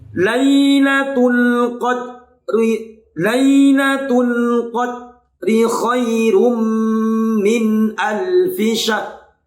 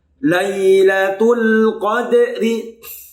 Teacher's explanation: Kesalahan membaca ayat ketiga, yang pertama pada huruf dal tidak dipantulkan. Ingat, huruf dal itu adalah huruf qalqalah. Maka qalqalah itu harus dipantulkan.